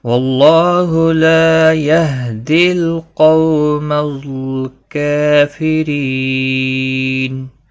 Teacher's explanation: وقف بالاسکان ہوگا. مد العارض وقفی ہوگا 3 سے 5 الف کے برابر کھینچ کر وقف کریں گے